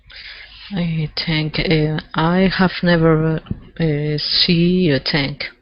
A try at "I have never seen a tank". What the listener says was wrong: Okay, I have never seen with an N at the end. Okay, so make sure you pronounce that N. I have never seen a tank.